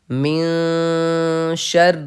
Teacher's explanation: نون ساکن کے بعد شین حروف اخفا میں سے آ رہا ہے، اس لیے ہم ایک الف کے برابر اخفا کریں گے